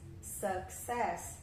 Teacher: na escrita tá U, só que a gente fala com o som do schwa